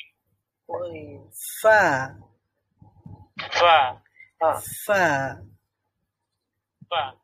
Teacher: বাংলাতে রয়েছে ফ অথবা ফা, আমরা বলি দুইটা ঠোঁট দিয়ে উচ্চারণ ফা করতে হয় বা ফ করতে হয়, কিন্তু এখানে দুইটা ঠোঁট দিয়ে নয়, উচ্চারণ করতে হয় নিচের ঠোঁট আর উপরের দাঁত ব্যবহার করতে হয়।